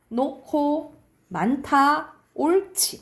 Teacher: 히읗 뒤에 기역, 디귿, 비읍, 지읒이 나오면 각각 키읔, 티읕, 피읍, 치읒으로 발음이 나요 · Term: 축약